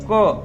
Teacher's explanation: क शब्द गले से निकलता है आप बोलकर देखिए क तो ये क का उच्चारण कहां से हो रहा है ये हमारे कंठ से हो रहा है इसकी ध्वनि गले से निकल रही है · जब हम क बोलते है तो क शब्द गले से निकलता है